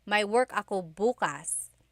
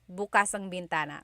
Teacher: If you say bukas, bukas, the emphasis is on the second syllable. That means open. If you say bukas, bukas, emphasis is on the first syllable.